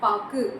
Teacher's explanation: கடைசியா உகரங்கள் வந்தது அப்படின்னா அது தன்னுடைய ஒரு மாத்திரை அளவுல இருந்து குறைந்த அரை மாத்திரையா ஒழிக்கிறது தான் குற்றிய லுகரம்